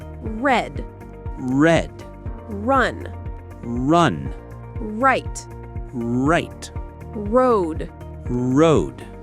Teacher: My tongue curls back, but it doesn't touch the top of my mouth. It just floats there. >> Like a little wave.